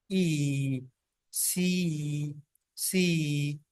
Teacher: Front of the tongue is raised, कि टंग का जो फ्रंट पार्ट है वो रेज होता है। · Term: फ्रंट वाउल